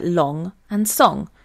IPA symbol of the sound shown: ŋ